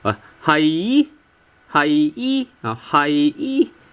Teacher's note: you originally have tone 5 for hai, but then eventually you have tone 1.